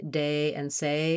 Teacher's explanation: So you might be saying more like de instead of day. Usually it's easier for people to say words that end with A, day, and say, because we can naturally glide. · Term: American diphthong A